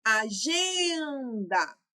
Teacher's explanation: O gen eu falei por mais tempo, então é minha sílaba tônica